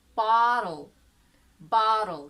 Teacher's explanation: So there is no vowel sound in between T or L. Bottle, that, bottle.